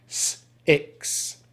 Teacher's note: the unvoiced K consonant sound, which we make by blocking air at the back of our throat with our tongue.